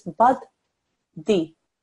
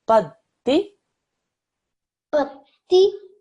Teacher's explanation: Don't do bad and di separate. One flick of the tongue should make the whole sound.